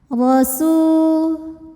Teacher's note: Ro-nya dibunyikan secara tafkhim. Sebab ro berbaris fathah, maka bunyinya tebal.